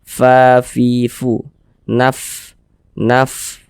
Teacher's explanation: ketika kita mengucap huruf fa itu harus ada nafas yang mengalir ketika kita mengucapkannya. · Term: sifat hamas